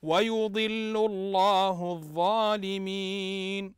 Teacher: تنطق اللام مشدده بالضم